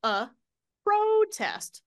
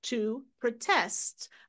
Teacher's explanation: Now the stress is on the second syllable.